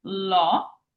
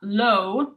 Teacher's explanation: Open aw. So not low, but law. Keep your O open.